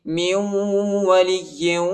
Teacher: میم کو واو کے ساتھ ملائیں گے، واو پر جو ہے شد آئی ہے اور ادھر غنہ بھی کریں گے